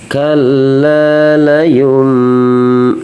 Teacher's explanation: jadi nunnya berubah jadi mim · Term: iqlab